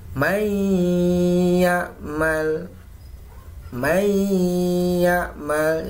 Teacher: Jadi suaranya masuk ya, nun sukunnya ini menjadi masuk ke ya atau hilang, nun sukunnya hilang. May ya'mal, nun sukun bertemu dengan ya. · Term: idgham bi gunnah